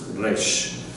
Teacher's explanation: So kind of hit a soft G, and then flutter the back of your tongue a little bit, like you would do it's a little trill back there.